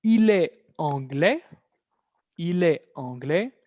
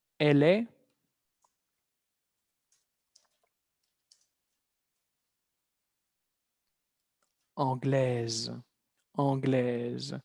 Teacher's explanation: Entonces, este ejemplo, repito, es para ver la diferencia de pronunciación en el cuarto caso que tengamos, entonces, de la feminización de los adjetivos, tengamos una consonante muda, al pasarla a femenino, se libera el sonido de la consonante